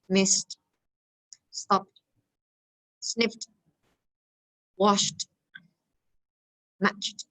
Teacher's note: words that end in S, T, F, K, sh, ch. So when we pronounce them, we have to pronounce with the T sound.